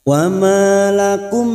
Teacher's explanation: mim sukun bertemu lam alif, mim sukun dibaca jelas tanpa mendengung.